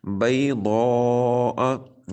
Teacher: حروف مدہ کے بعد حمزہ اسی کلمے میں ہے، تو یہاں پر مد متصل ہے، اس کو 2 سے اڑائی الف تک کھینچ کر پڑھیں گے۔